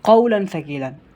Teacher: تنوین کے بعد نون ساکن یا تنوین کے بعد قاعدہ تھا، یہاں پر تنوین ہے، تنوین کے بعد فا آ رہا ہے جو کہ حروف اخفاء میں سے ہے، اس وجہ سے یہاں پر غنہ کر کے پڑھیں گے